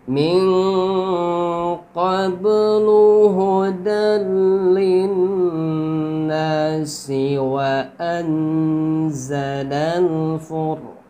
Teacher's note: Min nun mati bertemu qaf ya. Qaf ini huruf ikhfa, maka nunnya dibaca samar dengan dengung.